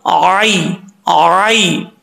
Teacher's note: عینانی، عین کو اپنے مخرج سے ادا کرنا ہے، عین، یا زبر آئی، آئی، اس کو آئی نہیں پڑھنا۔ یا لین ہے، اس کو لمبا کرنے کی ضرورت نہیں ہے